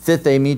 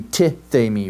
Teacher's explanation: You deaspirate. You take away the ha, and you just have the tau there. Well, essentially, it's the same thing with sozo, right?